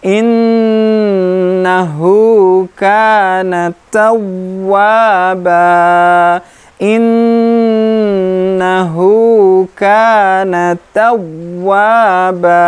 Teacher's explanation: bacaan nun syiddah, gunnah, lebih panjang dari mad tabi'i satu ayunan